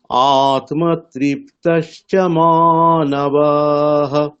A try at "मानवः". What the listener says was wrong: আচ্ছা, প্রথম লাইনে মানবা মানে ওটা হ্রস্ব আছে, তাহলে এটা টানা যাবে না। মানবাহ এরকম বলা যাবে না, মানবাহ। দেখুন